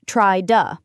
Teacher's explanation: The T in to can become a flap T or tap T, which sounds like a quick D, when it's between vowel sounds or a vowel and an R or L.